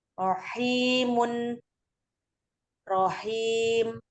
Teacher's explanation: Rohimun rohim itu ada domah tanwin dibaca 2 atau 4 atau 6 harokat. Namanya mat arid li sukun, mat ya disukunkan karena wakof.